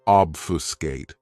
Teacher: has 3 syllables, and the stress is on that first syllable